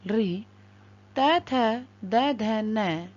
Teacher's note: दंत री, त, थ, द, ध, न और ऊष्म स। इनका उच्चारण स्थान दंत्य है, इसलिए इनकी संज्ञा दंत्य कहलाती है।